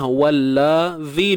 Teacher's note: Wallazi, huruf wa pada atas wa, kemudian lam yang bersabdu ni macam biasalah. Wallazi, dua harakat, hujung lidah keluarkan sedikit.